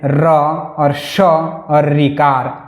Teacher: र श और ऋ का ऋ का उच्चारण स्थान मूर्दा है। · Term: मूर्धा